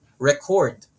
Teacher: Just by adding stress in the first syllable, it becomes a noun. If we add stress on the second syllable, record, it becomes a verb.